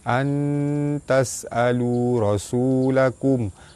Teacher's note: Nun mati bertemu dengan ta, ikhfa hakiki dibaca sama-sama nipis serta dengung 2 harakat. Baris depan bertemu waw mad asli panjang 2 harakat.